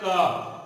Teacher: देखिए, कहने का मतलब है स्पर्श, तालु, कंठ, होठ, कोई भी वर्ण स्पर्श करता है स्थान विशेष को, कंठ को, कंठ के स्थान को, जैसे बोलते हैं क, तो कंठ के कंठ को वो हवा जो निकलता है फेफड़ा से कंठ को स्पर्श करते हुए निकलता है, इसलिए उसका नाम स्पर्श व्यंजन रखा गया है।